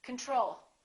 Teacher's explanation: second syllable is stressed the first o is reduced